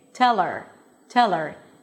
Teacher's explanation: I'm dropping the h and it just sounds like the e r ending.